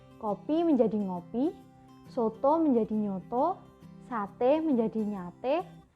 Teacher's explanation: Biasanya disamakan dengan nasalisasi dari fonem pertama suatu bentuk dasar